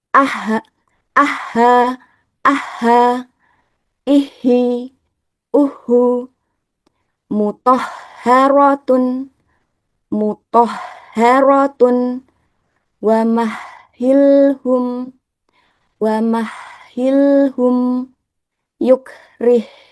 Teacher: untuk huruf ha bersyadah dibaca dengan dialirkan juga udara maupun ee suaranya karena memiliki sifat alkhames dan ar ee arrahwah.